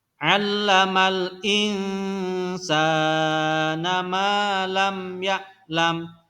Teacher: Panjang bacaan 2 harokat sama ya. Sin dan mim itu dibaca panjang 2 harokat karena ada huruf alif di belakangnya.